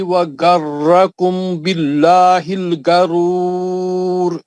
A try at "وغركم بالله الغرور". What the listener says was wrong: وغرکم میں غنہ چھوڑ دیا نا، اخفا کا آخری کا با ہے نا وہاں پہ میم ساکن کے بعد آخری میں. وغرکم کا جو میم ساکن ہے اس کے بعد با ہے، باللہ کا با ہے، تو اخفاء شفی ہو گیا وہاں. غنہ نہیں ہونا ہے نا، آپ غنہ نہیں کر رہے نا وہاں، بغیر غننے کے پڑھ رہے، بولنے کے بعد بھی بغیر غننے کے پڑھ رہے.